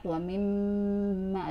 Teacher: Nah di sini gunnah karena mim bertasydid, mim termasuk huruf gunnah ya. Setelah gunnah dua ditahan di hidung 2 harokat